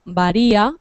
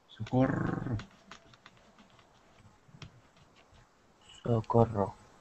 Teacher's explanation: una R como por ejemplo varía, que es suave, varía, ¿vale? O varias, como queráis, ¿vale? Y otra fuerte que es la que suena aquí en socorro.